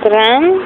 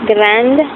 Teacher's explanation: When E is added to make the feminine form, the consonant is no longer final and is pronounced. So gran, if you add an E to make feminine, grand, you do pronounce the D.